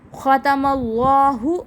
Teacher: ختم اللہ، خا کو پر پڑھیں، حروف مستعلیہ کا حرف. اللہ کا نام پر پڑھا جائے گا کیونکہ اس سے پہلے زبر ہے